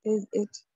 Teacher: इज का ज जो इट के साथ मिलकर जिट बन जाता है।